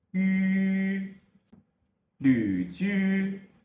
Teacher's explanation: However, the tongue position for ü is not exactly the same as that of e. The highest point of the tongue is slightly further back than it is for e.